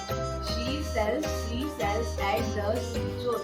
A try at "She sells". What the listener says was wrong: शेल्स नहीं है, सेल्स है.